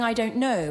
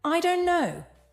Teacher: The T sound is dropped and it's spoken much more casually.